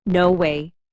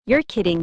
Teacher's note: It's about your voice. Your tone goes up when you're surprised. It goes down when you're calm. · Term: intonation